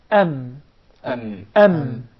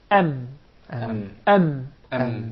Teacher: mim is articulated by closing the 2 lips together.